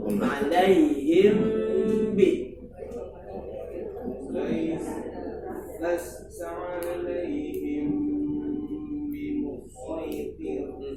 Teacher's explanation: mim mati bertemu dengan huruf ba, ikhfa syafawi, ada unsur gunnah di situ, samarkan bersama gun.